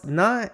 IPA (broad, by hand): n